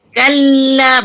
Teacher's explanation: Lam tu bila ada sabdu, bagi dia an-nabru, penekanan. Kalla, walaupun tekan janganlah kasar.